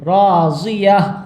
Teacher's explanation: تا تو پڑھا نہیں جائے گا، ہا کی آواز نکلے گی